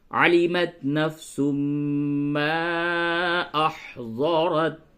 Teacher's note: تو سبھی آیت کے آخر میں تا تھا، اور ہم نے آپ سے یہ کہا کہ تا کی ادائیگی میں قلقلہ بالکل نہ کریں، یعنی ٹکراؤ بالکل نہ کریں